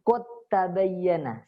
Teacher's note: Jadi langsung qad tabayyana, dalnya itu dianggap tidak ada. Walaupun tertulis tapi cara bacanya tidak. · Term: idgham mutajanisain